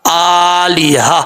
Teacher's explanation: اگر ویسے پڑھیں گے تو آلیہ تن پڑھا جائے گا، جب وقف کریں گے یعنی رکیں گے، اسٹاپ کریں گے تو کیا ہوگا، تا کو ہا سے بدل دیں گے، پھر پڑھا جائے گا آلیہ۔ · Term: گول تا